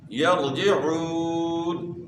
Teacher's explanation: واو ساکن سے پہلے پیش ہے، واو مدہ ہے، ایک الف کی مقدار کے برابر آپ نے کھینچنا ہے